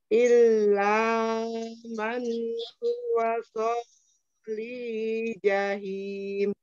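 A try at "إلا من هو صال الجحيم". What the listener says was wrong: Solil jahim. Lamnya alir dulu ya.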